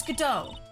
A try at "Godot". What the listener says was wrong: Silent T, it's French. I believe it's pronounced Godot.